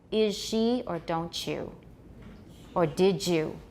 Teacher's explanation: palatalization is said to occur when the alveolar fricative in is becomes a palatal alveolar fricative as in is she